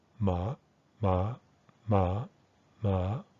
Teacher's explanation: you can hear a sort of a trajectory going slightly upward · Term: high tone